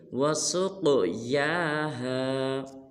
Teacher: جب سین کو قاف ساکن کے ساتھ ملائیں گے تو قاف کو پر ادا کریں گے اور قاف کو قلقلہ بھی کریں گے یعنی کہ ہلائیں گے بھی، اور یا کو ایک الف مقدار لمبا کریں گے، جیسے وسقیاھا۔